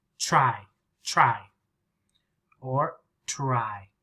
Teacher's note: Many Americans with TR, we say ch. The sound comes like ch, like chicken.